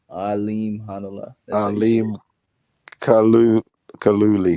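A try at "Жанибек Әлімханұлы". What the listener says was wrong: Nah, Hanala. No, there's no Kalu. It's Hanala. You don't even have to say the K. It's silent. Yeah, it's Hanala. Alim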